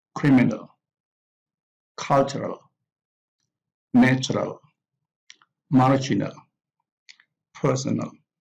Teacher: the adjectives which are also formed with the suffix error here the adjectives have the primary stress on the first syllable · the adjectives have the primary stress on the first syllable. We have like criminal from crime, criminal, cultural, natural, marginal, personal.